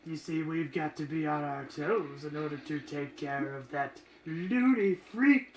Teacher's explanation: I'm really focusing on the vocal fry, which I guess that's kind of the Mark Hamill interpretation of the Joker.